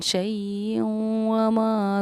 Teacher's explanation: تنوین کے بعد حروف یومن میں سے واو آ رہا ہے، اسی لیے ہم نے اس شیئوں پر اخفا بھی کیا اور غنہ بھی کیا